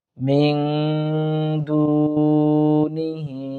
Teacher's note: এখানে মিং ইকফা গুণা করার চেষ্টা করব। হি 3 আলিফ টানবো।